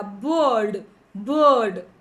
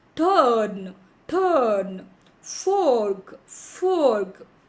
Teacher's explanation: ಇಡೀ ಒಂದು ವರ್ಡ್ ಖಾ ಅನ್ನ ಸ್ಲೋ ಆಗಿ ನಾವು ಪ್ರೊನೌನ್ಸ್ ಮಾಡಿದರೆ ಆರ್ ಅನ್ನ ಒತ್ತಿ ಪ್ರೊನೌನ್ಸ್ ಮಾಡ್ತೀವಿ. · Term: ಆರ್ ಕಂಟ್ರೋಲ್ಡ್ ವರ್ಡ್ಸ್